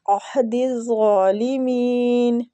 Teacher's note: دال کو زغا کے ساتھ ملائیں گے، کھڑی زبر بھی ہے، کھینچیں گے بھی، اور زغا مستعلیہ حروف ہے، اس کو پر بھی پڑھیں گے